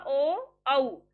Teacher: अब ओ को बोलिए, कंठ से आवाज आई और होठों की शेप में भी चेंज हुआ, ओ औ, होठ भी एक्टिव है और कंठ से आवाज आ रही है। तो आपके ये हो गए कंठ ओष्ठ है।